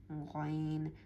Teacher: গাইন গলার একটু উপর অংশ থেকে আসবে।